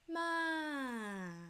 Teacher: Third one, falling tone, from high to low.